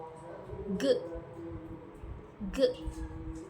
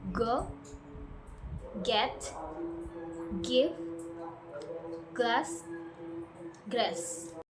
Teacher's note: The back of your tongue touches the soft palate and then release a burst of air while using your vocal cords.